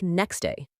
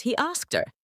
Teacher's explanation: the t or d sound often disappears completely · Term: elision